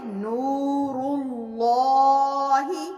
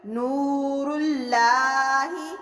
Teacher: لام کے پچھلے حرف پر پیش ہے تو اس کو باریک نہیں بلکہ موٹا پڑھیں گے، نور اللہ، نہ کہ اس کو اس طرح سے پڑھیں گے، نور اللہ، اس طرح سے پڑھیں گے تو غلط ہو جائے گا۔